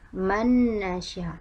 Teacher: Nun sukun pada huruf pertama bertemu dengan nun berharokat fathah, maka hukumnya adalah idgham, nunnya dimasukkan ke nun yang berikutnya. Man nasya, idgham artinya dibaca dengan gunnah 2 harokat.